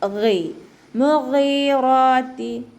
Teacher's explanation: മുഗീറാത്തി ഗൈനിൻ്റെ മഖ്റജ് തൊണ്ടയുടെ ആദ്യ ഭാഗത്തു നിന്നാണ് കേട്ടോ, അദ്നൽ ഹൽക്ക് എന്ന് പറയും, അപ്പോൾ അതിൻ്റെ സൗണ്ട് ക്ലിയർ ആക്കിക്കൊണ്ട് കൊടുക്കുക.